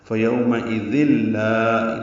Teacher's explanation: یہ تنوین کے بعد لام آنے کی وجہ سے ادغام کامل ہوا ہے، ذال لام سے ملا دیا گیا ہے ، فیومئذ لا، لا الف مدہ ہے، 2 حرکات لمبا ہے،